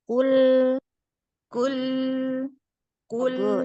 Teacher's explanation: Lamnya tipiskan lagi, Bunda.